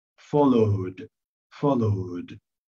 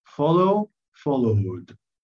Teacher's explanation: لازم انت تطول شوية الصوت بتاع الفاول عشان تعرف تشبكها مع الدي